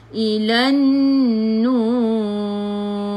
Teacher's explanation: Ilan nur, tekan ke dalam nun, nun ada sabdu, alif lam syamsiyah, nun ada sabdu. Nun ada sabdu ni wajibul gunnah, wajib dengung.